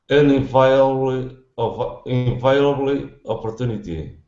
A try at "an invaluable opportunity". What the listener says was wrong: You're pronouncing an L, but right after the L, you're pronouncing the E. The E is silent. Okay, no need to pronounce that E at all.